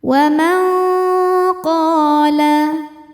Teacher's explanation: Karena nun sukun bertemu qof. Cara bacanya nun disamarkan ke qof dan dengungkan. Dengungnya besar ya. · qo hukumnya mad thobi'i zohiri karena ada alif sebelumnya fathah. Bacanya panjang dua harakat. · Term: ikhfa hakiki ab'ad